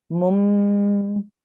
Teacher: you will make a nasal sound with the meme, okay, instead of the nasal sound of noon